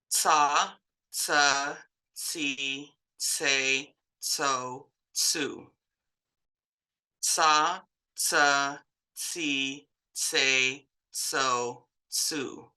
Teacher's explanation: an S you can draw it out longer but with the c the TS sound you can't draw that out